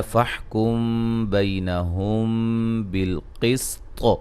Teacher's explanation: طا کو بھی موٹا ادا کریں گے، قلقلہ کریں گے، قلقلہ کو واضح کریں گے